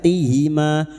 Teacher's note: hamzah yang berharakat alif kecil di atas dua harakat kita panjangkan